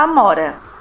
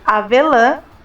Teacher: na palavra amora a letra A tem o som aberto e forte já na palavra avelã o a na última sílaba tem o som mais fechado e com pouca intensidade Ã Não é tão forte quanto a letra A sem otil